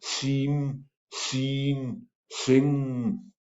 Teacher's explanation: Airflow is cut off through mouth and redirected through nose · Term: nasal stop